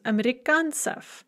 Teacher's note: Amerikanets, an American man, becomes amerikansef. And notice how we lose that ye before the ts. Remember that yets is often going to lose its ye when we add an ending.